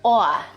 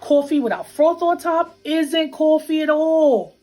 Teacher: One feature common in New York City is what we call a raised vowel in words like thought and cloth. It sounds something like aw.